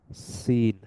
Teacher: সিনের ক্ষেত্রে tip of the tongue is near the upper front teeth allowing air টু pass. আর জায়ের ক্ষেত্রে vibration হচ্ছে, সিনের ক্ষেত্রে যেটা হচ্ছে না।